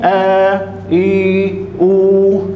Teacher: هذا هو المد البدل، يمد بمقدار إيه؟ حركتين